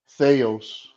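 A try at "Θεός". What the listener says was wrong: only one small mistake uh the emphasis okay Theos no now you chck Theos the emphasis is on the O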